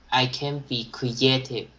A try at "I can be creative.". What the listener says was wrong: Very good. Very, very good.